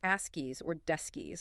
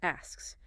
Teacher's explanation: both the K sound, a little stop of air, and the final S sound, the hiss, are distinctly heard, but crucially without adding an extra vowel sound in between, like askies or deskies, which would sound unnatural. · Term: SKS cluster